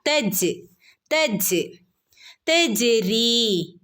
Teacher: ജീമിന് സുക്കൂൻ വന്നാൽ കൽക്കലയുടെ ലെറ്റർ ആണ് ഫുൾ സുക്കൂൻ കൊടുക്കണം